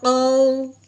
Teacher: ہاں جی، یہ پھر واو ساکن ہے، واو ساکن سے پہلے زبر آ گئی، اب اس کو لین کہتے ہیں، لین کو نرمی سے پڑھنا، کھینچ کے بالکل نہیں پڑھنا